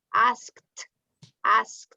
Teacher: you don't say i ask it no i asked it's like a t